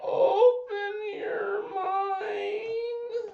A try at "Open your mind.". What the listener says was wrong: No, he goes, open your mind. he doesn't say it like that. He has a deep voice.